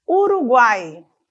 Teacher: Então temos uma semivogal U, temos uma vogal A e temos uma semivogal I. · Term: tritongo